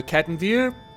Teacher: it has a rolled r in it or it does when I pronounce it